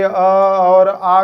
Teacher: अ और आ को कंठ से बोला जाता है।